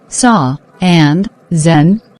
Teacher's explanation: S also un voiced and Z very clearly voiced